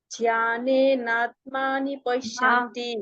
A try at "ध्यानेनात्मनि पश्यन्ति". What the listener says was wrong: मानी नहीं है ना, मनी है। फिर से।